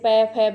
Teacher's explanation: और कुछ शब्द ये व्यंजन वर्णों को बोलते समय हमारे होठों का ही मतलब एक दूसरे दोनों होठों का स्पर्श होता है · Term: ओष्ठ व्यंजन